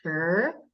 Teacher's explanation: it is pronounced sure. So your voice is going up. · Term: second tone